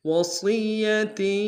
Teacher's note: وصیہ میں صاد کو یا کے سامنے لانا ہے، صاد کو موٹا ادا کریں گے، یا کے اوپر تشدید زور دیں گے، تاکہ تنوین کو آگے یا کے سامنے لانا ہے، یا کے اوپر تشدید زور دیں گے۔